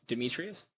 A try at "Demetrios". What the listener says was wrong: Demetrios. Demetrios. It's not a U, it's an O.